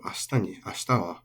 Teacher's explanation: Ashita is final high